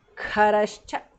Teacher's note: Visarga changes to shu there. Cha kharascha because of sandhi. · Mriduhu visarga changes to jihva mulya.